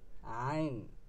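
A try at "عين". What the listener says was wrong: ভিতরে নিতে পারবি উচ্চারণটা এখানে। আইন হালকা করে না, ভিতর থেকে, ভিতর থেকে, এখান থেকে। ভিতরে এখান থেকে আইন। আরো নিচে যা, আরো নিচে যা তো। এখানে, এখানে এখান থেকে বলতেছিস তুই, এখান থেকে হবে আইন।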